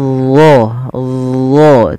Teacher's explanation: pangkal lidah kita kita angkat ke atas jadi d d tebal kemudian lidah itu juga melekat dengan langit-langit karena dia sifatnya adalah idbaq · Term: sifat istilanya dan sifat idbaqnya